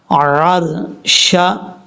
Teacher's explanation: عین کو کلیئر کرنا ہے، حمزہ کی آواز نہیں پڑھنی